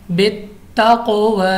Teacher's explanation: क़ाफ चूँकि हमारे पास मुस्तालिया भी है और कलकला भी है इसलिए हमने इसको लौटती आवाज़ के साथ पढ़ा है और मोटा भी पढ़ा है